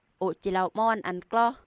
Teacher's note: in the preglottalized nasal, there's a long period of silence, followed by a short nasal portion, and then the onset of the vowel and the coda